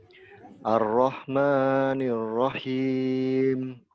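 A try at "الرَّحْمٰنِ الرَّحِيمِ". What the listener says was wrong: Maknya jangan terlalu panjang. Ar-Rahmanir-Rahim. Ar-Rahmanir-Rahim. Dan Ar-Rahmanir-Rahim.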